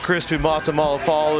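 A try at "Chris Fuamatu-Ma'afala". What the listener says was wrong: That's not his name. Chris Fuamatu Mafala. Fuamatu Mafala.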